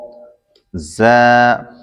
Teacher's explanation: ذا زبان کی نوک دونوں دانتوں کے اندرونی کنارے سے ادا ہوتا ہے